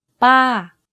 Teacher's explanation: You can hear from my voice that my pitch went up and then down very slightly. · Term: falling tone